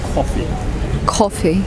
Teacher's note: coffee uses the kind of the long vowel sound e but without extending it but it's the same position as the long vowel sounds coffee